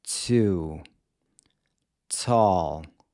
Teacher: When you pronounce the English T, as in the words to or tall, the tip of your tongue makes contact with the ridge right above your front teeth, and you let a ton of air escape through your mouth.